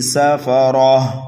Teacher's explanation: سین کو سینٹی کی آواز دے کر کے پڑھیں گے لیکن جلدی پڑھیں گے اس لیے کہ یہ متحرک ہے، فا بھی متحرک ہے، را بھی متحرک ہے اور تنوین کو بھی جلدی پڑھتے ہیں، ٹھیک ہے۔